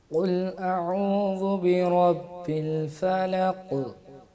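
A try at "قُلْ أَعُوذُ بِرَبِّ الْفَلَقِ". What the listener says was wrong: نہیں بیٹا اس میں دباؤ نہیں دیں گے. فلق یہ تھوڑی سی جو دیر لگا دی نا یہ نہیں کرنی. الفلق الفلق.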